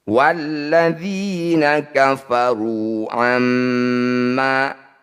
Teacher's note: Walladzina kafaru amma, mim bertasydid atau nun bertasydid disebut bacaan gunnah musyaddadah. Bunyi mim dengungkan 2 harokat dengan cara merapatkan bibir. Amma u, fathah diikuti alif. · kasrah diikuti Ya Sukun disebut bacaan Mad thobii atau mad asli panjangkan dzi ini dua harakat saja